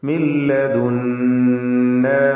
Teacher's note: സാകിനത്തായ നൂൻ ശേഷം ലാം ഇദ്ഗാം ബിഗൈരി ഗുന്ന കാമിൽ ലാമിലേക്ക് പൂർണ്ണമായും ലയിപ്പിച്ച് നൂനിനെ മണിക്കാതെ ഉച്ചരിക്കുക.